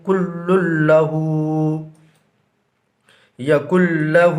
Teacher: محترم ناظرین، یہاں پر بھی تنوین کے بعد حروف یرملونہ میں سے لام آ رہا ہے، لہٰذا یہاں پر بھی ادغام بلا غنہ ہوگا، یعنی لام کے اوپر جو دو پیش دیکھ رہے ہیں، ایک پیش کو گرا دیں گے اور ایک پیش کے ساتھ اس لام کو اس لام سے ملا دیں گے